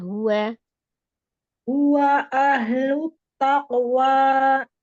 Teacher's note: huwanya disempurnakan saja dhammahnya tapi tidak dipanjangkan. Huwa dimonyongkan.